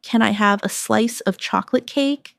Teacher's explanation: Stress chocolate cake. So it sounds delicious and inviting.